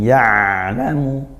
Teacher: ain sukun ya'lamu dialirkan suaranya sedang, dialirkan sedang